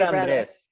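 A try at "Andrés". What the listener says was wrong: gotta roll your R.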